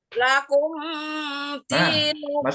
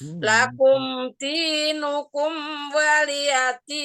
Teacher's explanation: Jadi lakumnya tidak menekan, tidak mendengung.